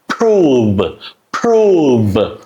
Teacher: So it started with unvoiced consonant sound and is ending on a voice consonant sound. So P and then V.